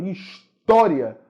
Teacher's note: E se o ditongo é crescente, a sílaba tônica da palavra é a penúltima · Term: ditongo crescente